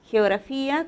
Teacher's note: primero es la fricativa velar y al final gra en la sílaba gra estamos pronunciando el fonema oclusivo velar